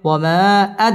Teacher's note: বামে হামজা মধ্যে মুনফাসিল তিন আলিফ টেনে পড়তে হবে ওয়ামা আদ দাল কলকলার হরফ ধাক্কা দিয়ে পড়তে হবে